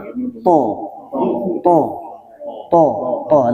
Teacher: Isti'la niku pangkal lidah, pangkal niku artinya belakang nggih. Pangkal lidah kita niku itu terangkat ketika kita membaca to. Makanya ketika kita baca to niku seperti ada gelembung di sini nggih. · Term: sifat isti'la